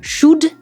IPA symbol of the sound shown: ʃʊd